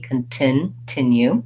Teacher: i actually say a real t sound in this word so i want to release my t continue it doesn't have a stopped t or flat t like